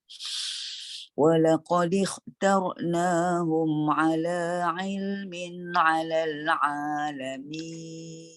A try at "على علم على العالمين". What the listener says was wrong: Okey, cuma pada cuba dibuka sedikit lagi ya, direndahkan rahang. Ala ilmin ala alamin.